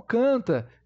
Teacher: se eu tirar o n e pronunciar o a nasalado eu vou continuar com o canta Então canta Eu tenho esse a nasalado o t e o